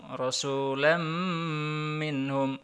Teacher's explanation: Jadi nunnya sudah tidak dibaca tapi masuk ke mim langsung. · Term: idgham bi gunnah